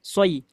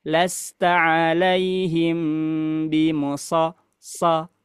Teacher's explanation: Kalau sad itu pangkal lidahnya naik.